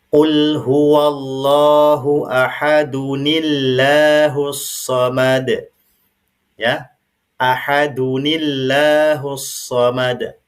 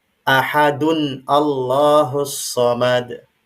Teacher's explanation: Ketemu dia dengan hamzah wasal di ayat yang kedua. Maka cara bacanya di sini tanwinnya dihilangkan sehingga dia menjadi dhammah saja. Kemudian sebelum masuk ke lafaz Allah itu ada kita kasih dia nun wiqayah. Nah, sayangnya di sini tidak dituliskan, ya, nun wiqayah.